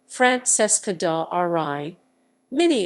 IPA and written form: franˈtʃeska da (r)ˈriːmini (Francesca da Rimini)